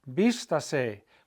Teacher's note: the vowel that I'm hitting on the hardest is the I. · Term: stressed vowel